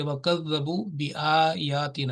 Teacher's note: جتنا یہ آ لمبا ہوا ہے، جتنا یہ یا لمبا ہوا ہے، اتنا ہی یہ الف لمبا ہوگا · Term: چھوٹی مد